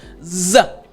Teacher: to make sure you're doing is you have your tongue z your tongue needs to be touching the roof of your mouth but you're going to buzz you're kind of letting air come right above your tongue and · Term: z sound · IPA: /z/